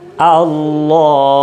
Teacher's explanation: Untuk yang taglid, taglid itu menebalkan bacaan lam jalalah dengan tetap makhrajnya pada posisi lam